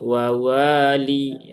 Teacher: di waw yang kedua ada alif ya setelah fathah maka dia dibaca panjang dua harokat